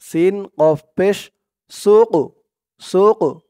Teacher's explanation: رسول الله ناقة الله ওয়াও জবর ওয়া সিন দিয়ে কফ ধরবে এই কফটা কলকলার হরফ ধাক্কা দিয়ে পড়তে হবে